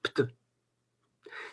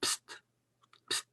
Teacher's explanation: les trois consonnes sont noires. C'est-à-dire, elles sont toutes non voisées